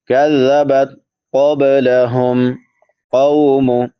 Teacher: قاف کے بعد واو لین ہے، واو ساکن ما قبل فتحہ یعنی زبر ہے، تو اس کو نرمی سے پڑھیں گے